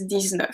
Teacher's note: So the X becomes a Z, then the EU is a closed sound.